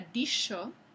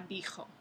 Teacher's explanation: La palabra que antes era dicho pasó por un proceso de velarización a dijo.